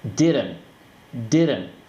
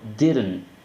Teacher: Si te das cuenta, tanto en doesn't como en didn't, hay un pequeño sonido entre la D y la N, es decir, antes de la consonante de la N, ¿sí? Porque queda muy raro decir, por ejemplo, did, no fluye, ¿ok?